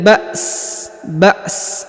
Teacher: huruf sa dibaca tipis, ya, atau dengan suara rendah